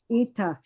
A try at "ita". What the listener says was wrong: Your T's got a D sound. See, Ida. Ida. So remember now, and this is where forgetting English comes in. Ida.